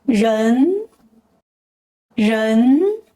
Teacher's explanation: is pronounced with the second tone, the rising tone